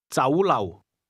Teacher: The Cantonese word restaurant is pronounced with a combination of mid-rising and low-level tones.